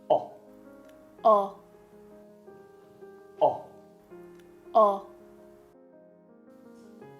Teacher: put your tongue low and back in your mouth, slightly push your lips together, and then make a short voiced sound. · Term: low back rounded vowel